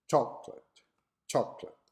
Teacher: example the word chocolate in english is a true syllable words with stress on the first syllable